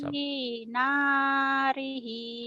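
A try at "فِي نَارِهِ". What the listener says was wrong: Kedengarannya kayak hi, itu fi ya. Kamu ngomongnya apa? Hi apa fi? Fi. Tapi mulutmu kayak hi ya. Kurang ngebuka kali ya. Fi narihi.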